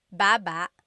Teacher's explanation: Emphasis is on the first syllable.